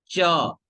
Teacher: च बोल रहे हैं तो जिह्वा का मध्य भाग बिल्कुल तालु को जाकर के टच कर दे रहा है। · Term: तालव्य